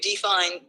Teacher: d is unstressed and fine is stressed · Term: I am